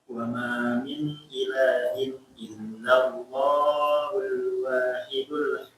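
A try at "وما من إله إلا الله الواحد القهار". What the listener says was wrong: Jangan terlalu lama ya, maksudnya di illallah. Cukup 2 harokat, ingat. Ulangi.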